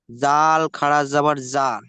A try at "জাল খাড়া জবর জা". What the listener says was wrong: যা না, জাল খাড়া জবর যা, টান দিয়ে বলতে হবে।